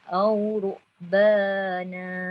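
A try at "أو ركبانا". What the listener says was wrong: Ini ham sikit. Au rukbana. Terlebih pula ruk kan. K jadi qalqalah. Au ruk.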